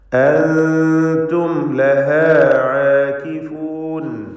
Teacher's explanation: അൻതും സക്കിനൂനും താവും ഇഖ്ഫ ഹഖീഖി നൽകി മറച്ച് മണിച്ച് ഉച്ചരിക്കണം.